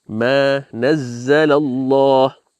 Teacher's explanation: Now Allah is lafzul jalala, although it's written with a normal fatha, this is also a mad. So you read it with 2 harakat.